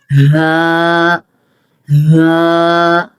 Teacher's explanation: حلق کے آخری حصے سے ادا ہوتا ہے